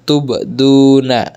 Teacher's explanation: di sini du dibaca panjang atau mat karena ada dhamma diikuti oleh wawu sukun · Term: mat asli